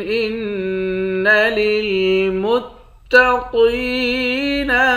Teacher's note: نون مشدد ہے، یہاں غنہ کریں گے